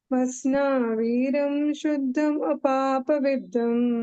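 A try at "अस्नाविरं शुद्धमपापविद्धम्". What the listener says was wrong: It is not Viram, it is small V. Ashna Viram Shuddham. If you say Viram, one matra will go. Ashna Viram Shuddham Apapa Vidham.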